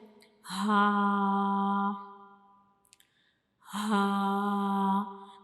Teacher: ہا، ہا، تو ہا جو یہ ایک حروف ہلکی ہے اور یہ ہمارے حلق کے یعنی گلے کے بالکل نیچے والے حصے سے ادا ہوتا ہے